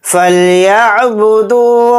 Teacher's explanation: یہاں پر عین اچھے سے حلق سے نکالیں گے اور دال کے ساتھ واو مدہ ہے تو دال واو پیش دو کو تھوڑا کھینچ کر پڑھیں گے.